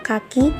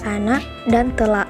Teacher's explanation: fonem konsonan K yang pada posisi awal onset K seperti pada kata kaki akan direalisasikan secara berbeda dengan glotal pada anak dan telak. Dengan demikian dapat dikatakan bahwa realisasi fonem K dalam contoh tersebut adalah bunyi K dan bunyi glotal, dan kedua-duanya dapat dikatakan sebagai alofon dari fonem K.